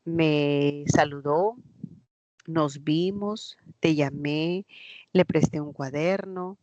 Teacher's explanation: están antes del verbo y se pronuncian con el acento del verbo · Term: proclíticos